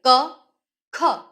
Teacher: તમે અનુભવી શકો છો કે ખમાં વધારે હવાની જરૂર પડે છે અને કમાં ઓછી હવા અનુભવાય છે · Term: મહાપ્રાણ